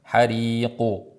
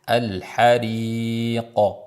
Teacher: Yo'g'on qalqala bo'ladi, zammaga moyil bo'lmaydi.